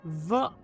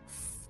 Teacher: The VV sound is voiced. The F sound is unvoiced. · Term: voicing